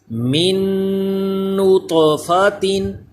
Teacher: طا حروف کلکلا بھی ہے, اس میں کلکلا بھی کریں, آواز لوٹ کر بھی آئے اور یہاں ادغام میں غنہ بھی ہو.